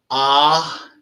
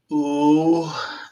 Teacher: Very often in English, we spell Om as O-M, and actually it's three sounds. Ah in the back of the throat, ooh as it rolls over the tongue, and as the lips come together, ending the syllable.